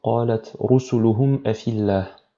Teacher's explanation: Rusuluhum mim sakina, et donc ici la hamza qui suit le mim sakina, et on n'a pas de nasillement supplémentaire, où on ne fait que prononcer naturellement la lettre mim sakina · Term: al-idhar al-shafawi